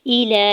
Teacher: लाम के ऊपर खड़ी ज़बर दो हरकत खींच के अदा करना है।